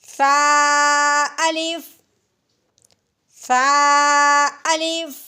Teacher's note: ऊपर वाले दांत और नीचे वाले दांतों के दरमियान हल्की सी जबान की नोक आएगी और नरमी से अदा करेंगे